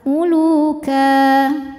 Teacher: Maka cara membacanya adalah tanwinnya bunyi n-nya hilang ya. Jadi ka dan panjang 2 harokat. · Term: mad iwad